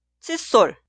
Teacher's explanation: cuando pronunciamos la palabra posterior sol suena en el sonido forzado sol